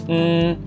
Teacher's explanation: An alveolar nasal is [n] because your tongue closes the airway in your mouth by pushing up on the alveolar ridge right behind your teeth.